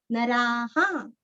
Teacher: यहाँ पे रा पूरा बोल के विसर्ग का उच्चारण यहाँ पे हमें हा ही करना है, यहाँ पे ह नहीं बोलना।